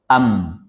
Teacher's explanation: nafasnya tertahan am enggak ada nafas lagi mengalir. Kemudian saat dia sukun hurufnya juga suaranya tidak syiddah dan tidak juga rakhawah. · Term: jahar